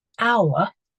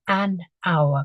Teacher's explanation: it doesn't make the H sound at the beginning. So we would say an hour because it sounds like the ow sound.